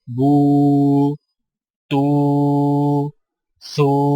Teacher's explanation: واو مدہ ہونٹوں کو گول نہ تمام ملا کر تھوڑا سا کھینچ کر پڑھا جاتا ہے، اور اس کی آواز کا رخ سامنے کی طرف ہوتا ہے